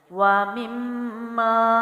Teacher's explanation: وَيُقِيمُونَ الصَّلَاةَ، وَيُقِيمُونَ الصَّلَاةَ، واو پڑی حرکت کے ساتھ ہے، مما، نیم کے نیچے زیر ہے لیکن آگے تشدید ہے تو میم مشدد کا غنہ لازمی ہے۔ اس کے بعد الف خالی ہے، اس سے پہلے میم پہ زبر ہے تو الف مد ہے، غنہ بھی ہوگا اور مد بھی کھینچیں گے، وَمِمَّا، ٹھیک ہے۔